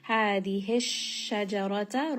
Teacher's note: sheen is going to have tafashi, meaning that that sound is kind of spreading within the mouth just a little bit. Hadihi shajarata, ra here is going to be heavy because it has a fatha.